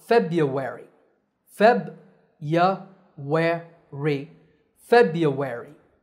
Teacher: the american version is much easier the first r is silent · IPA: /ˈfeb.jə.we.rɪ/